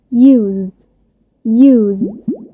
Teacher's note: use آخره z sound رغم ان مفيش هنا حرف الزد، ولكن نطق الاس هنا في الكلمة دي كان شبه صوت ز، فلما اجي اضيف دي الاي والدي مع بعض هيطلعوا صوت واحد بس د.